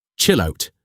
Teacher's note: Connect the words seamlessly so there is no space between them. The double L slides straight into the O. It sounds like a single word.